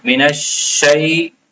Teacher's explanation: یہ شین کے اوپر تشدید ہے تو اس کو سختی سے پڑھا جاتا ہے